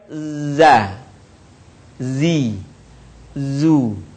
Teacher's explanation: karakter khasnya dia mirip dengan suara dengungan tawon · diucapkan dengan mengalir suara tanpa diiringi dengan mengalirnya udara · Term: huruf dza